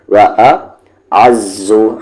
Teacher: عین کا مخرج بیچ والا حلقہ